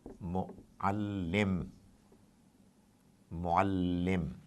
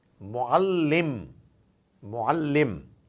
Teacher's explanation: I'm interested in this symbol, which is tashdid, shad, which is essentially doing two things: bringing mu'al to a halt for a while and then pushing it to the next letter. So it's a double action symbol, tashdid.